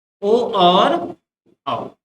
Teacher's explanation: अब इनका उच्चारण स्थान भी कैसा होगा, सेम जैसे मैंने पहले बताया, कंठ और ओष्ठ को मिला के ओ और औ का उच्चारण स्थान बनता है, तो क्या हो जाएगा, कंठोष्ठ, कंठ ओष्ठ।